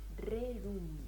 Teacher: muy famoso las ses intervocálica se convierten en RS O sea la s que está entre dos vocales pasa a ser una r